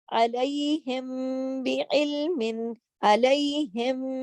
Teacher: اخفاء شفوی میں آپ دیکھیے کہ میم ساکن کے بعد اگر با آئے تو میم ساکن کو غنے کے ساتھ اور اخفاء کے ساتھ، یعنی پورے ادائیگی کے ساتھ ہم پڑھیں گے۔